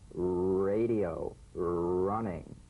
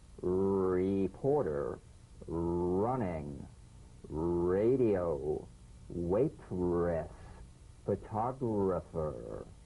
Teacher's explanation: Now, feel the strongly vibrating R on the hard palate.